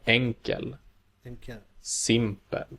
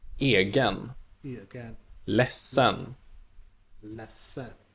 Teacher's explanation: Adjectives in L and R have accent 1, but those in N have accent 2.